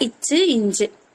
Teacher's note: நாக்குக்கு நடுவா, நாக்குக்கு நடுவுல இருக்கா, அன்னத்துக்கு நடுவுல இருக்கா. அப்ப நாக்கோட நடுப்பகுதி அன்னத்தோட நடுப்பகுதியை தொடறனால